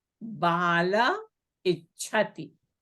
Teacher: So in all these cases where the Visarga is preceded by a and it followed by any vowel other than a, the Visarga is dropped or is deleted.